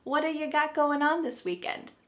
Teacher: This is really typical of American English where a T that's surrounded by vowel sounds is going to change to a D. It's called a flapped T and it just kind of uh rolls off your tongue in a smooth way.